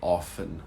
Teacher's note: it's probably more common to say often without the T